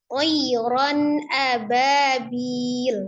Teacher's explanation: Tanwin bertemu dengan huruf alif. Alif adalah salah satu huruf al-halqi dari tenggorokan, maka harus dibaca dengan izhar jelas